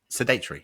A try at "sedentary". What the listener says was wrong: Not sedate. We're not sedating each other